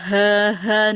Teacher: dia kedengaran kalau suaranya keluar dari dada bukan keluar dari pangkal tenggorokan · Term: ghulu